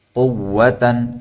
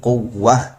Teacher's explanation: اگر آخر میں تا آتی ہے تو اسے ہا ساکنہ سے بدل دیتے ہیں